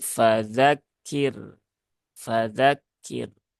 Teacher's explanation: yang tadi kalau di sini ini rnya dibaca tafkhim atau tebal kalau di sini ro sukunnya dibaca tipis atau tarqiq